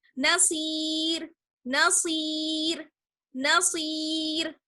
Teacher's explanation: را کو باریک پڑھیں گے. زیر زبر کی وجہ سے نہیں بلکہ یا ساکن کی وجہ سے